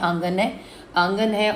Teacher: نون کی وائس ناک میں جانے کو کہتے ہیں غنہ، ٹھیک ہے؟ نون کی آواز ناک سے آئے گی۔